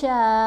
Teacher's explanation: اور جو آگے شین کے اوپر آپ کو مد نظر آ رہی ہے وہ مد متصل ہے اور اس کی پڑھنے کی جو مقدار ہے وہ 4 سے 5 حرکت کے برابر ہے. یہاں شین کو ہم نے 5 حرکت کے برابر لمبا کیا